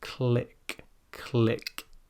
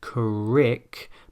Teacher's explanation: It should not sound like crick, but click. You can hear that flicking of the tongue on the top of the mouth there. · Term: L sound